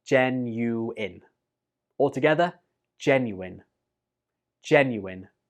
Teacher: I hear some students pronounce this like genuine, but the last syllable in this word is pronounced in, not ein.